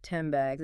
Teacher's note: the N sound might shift its position slightly, becoming more like an M sound M, which is also made with the lips. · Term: Assimilation